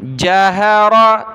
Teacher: तीनों पर ज़बर है, रा को मोटा किया